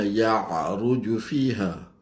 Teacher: Wa ma ya'ruju fiha ain bukan mulut lalah. Ya'ruju jangan dibunyikan ain daripada hidung.